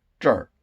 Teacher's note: So 这里 becomes 这儿. You drop the li, and then you add the er